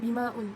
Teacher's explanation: Maun tu adalah mad jaiz mufasil sebab huruf mad bertemu dengan hamzah pada lain kata, jadi dibaca dengan panjang 2, 4 ataupun 5 harakat.